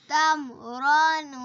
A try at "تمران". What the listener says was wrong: نہیں تم را تم کلکلا نہیں کرنا. غنہ بھی نہیں کرنا.